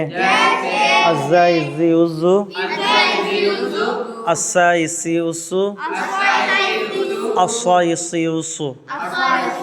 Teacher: ज़ुबान की नोक, सनाउलिया और सनाए सुफला के कुछ मिलने से ज़ा सीन साद अदा होते हैं और साद मोटी होती है।